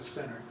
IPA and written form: ˡsenɚ (center)